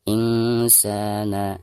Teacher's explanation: Insana, nun sukun atau nun mati berhadapan dengan salah satu huruf ikhfa, di sini huruf sin. Maka cara membaca nun sukunnya itu harus disamarkan ya, disertai dengan dengung · Ketika membaca sa-nya dipanjangkan 2 harokat karena dihukumi mad tabi'i. Harakat fathah sa berhadapan dengan alif sukun.